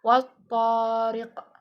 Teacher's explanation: Nah, wat-thariq itu ada alif lam syamsiyah karena alif lamnya itu ketemu sama huruf to. Lalu ada mad tabi'i yang di huruf to yang harokatnya agak panjang sebelum huruf ro. Lalu ada qalqalah kubro karena di akhir itu ada wat-thariq.